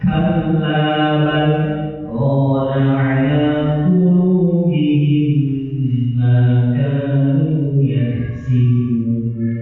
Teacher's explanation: kita berhenti sejenak, memutus sejenak, tapi kita melanjutkan bacaan tanpa mengambil nafas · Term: sakitah